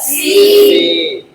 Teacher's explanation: سین کا مخرج ہاں زبان کی نوک ثنایا سفلا کا کنارہ مع متصل ثنایا علیا کے